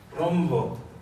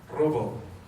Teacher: una está ligada con la M y nos genera más una resonancia glótica, rombo. Y en el otro es robo, más plosivo.